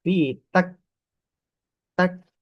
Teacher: Huruf kaf ini bukan huruf yang memantul, bukan huruf qalqalah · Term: sifat tertahan kuat